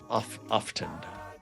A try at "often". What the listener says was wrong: You pronounce the T real hard.